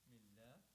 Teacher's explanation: Allah will be pronounced light because mim before that is kasra, has kasra